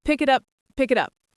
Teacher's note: Sounds like one word, pick it up.